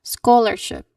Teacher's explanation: Stressing the first syllable should be the, you know, the trick here.